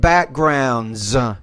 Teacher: You don't forget that S ending at the end, and it sounds like a Z because it comes after a voiced consonant